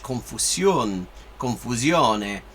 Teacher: if you like get a little bit less cautious with where you put your tongue, it will gradually move in the direction of sh, because it's right there, it's right where your tongue goes to pronounce sh or z.